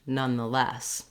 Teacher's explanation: We might be slightly longer on the none than on the schwa for the word the